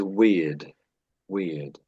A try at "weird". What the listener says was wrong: Yes. Yeah. Yeah. That's it.